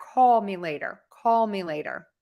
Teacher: that dark L where you're going to have your tongue further back